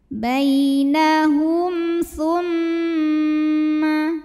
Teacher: mim sukun dibunyikan dengan jelas, M-nya tidak perlu ditahan.